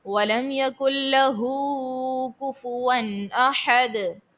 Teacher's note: ہا کے اوپر جو ہے الٹا پیش ہے تو اس کو کھینچ کر ادا کریں گے ایک الف کی مقدار، اور اس کے بعد دال میں آخر میں ساکن کرنے کی صورت میں دال کو خوب ظاہر کریں گے۔